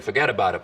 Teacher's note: he's just said something which is stereotypical New York, which is forget about it, as if it were one word.